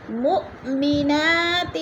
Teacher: علمتمو پہ وہ مدہ ہے، ہن پہ نون مشدد ہے، سختی سے جمع کر پڑھیں گے۔ مؤمنات، مو پہ حمزہ ساکنہ ہے، جھٹکا دے کر پڑھیں گے